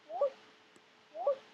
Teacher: It's supposed to start mid and go high, and it does indeed start mid, but it drops.